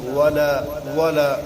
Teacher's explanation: واو کا مخرج بتایا کہ جب کہ دونوں ہونٹ پورے نہ ملے · لام کو دو الف کے برابر کھینچ کر پڑھیں گے